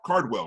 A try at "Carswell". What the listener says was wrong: Cars, like cars with an S. Carswell. It's Carswell.